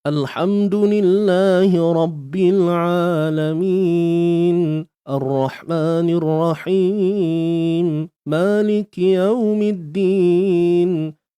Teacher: Ini contoh bacaan yang mana saya tapakkan tone suara saya pada hidung. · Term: bunyi sengau